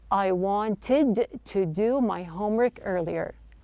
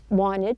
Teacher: the T sound in the word wanted, the T is dropped. This is not an uncommon practice when the T follows an N.